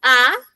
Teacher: Porque mis labios van a tener una abertura, se van a abrir. Cuando yo digo A, me voy a dar cuenta que los labios se van a separar, se van a abrir, por eso es vocal abierta.